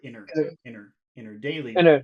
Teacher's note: in her it just sounds like one little word